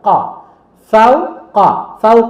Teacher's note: দেন ফা ওয়া জবর ফাউ, কফ জবর ক, ফাউ ক। ফাউ নরম বাট কটা কিন্তু মোটা অক্ষর, একটু সাউন্ডটা একটু জোরে হবে, হ্যাঁ, এবং মোটা সাউন্ড হবে।